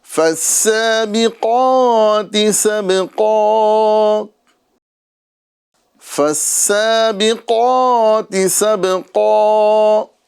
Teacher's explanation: بلند آواز سے سین کی سیٹی کے ساتھ ہمیں اس کو پڑھنا ہے